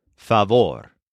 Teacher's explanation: it's pronounced with the stress on the second syllable